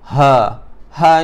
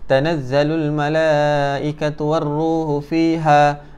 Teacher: ha di sini ha berada di tengah-tengah kerongkong